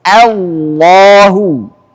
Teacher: Hamzanya nggak boleh tebal, nggak boleh Allah, tapi harus Allahu. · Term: hamzah